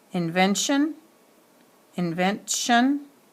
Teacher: the accent falls on the syllable right before the suffix